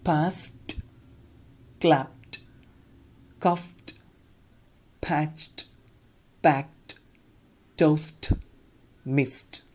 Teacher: I pronounced the last sound of each word t, not d or id.